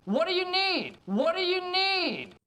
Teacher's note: stresses the words what and need, with the majority of the emphasis going on need